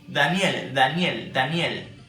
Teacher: in Daniel, you see that your tongue goes straight to the teeth